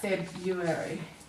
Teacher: It's very hard to pronounce that R, February, so we tend to leave it out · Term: silent R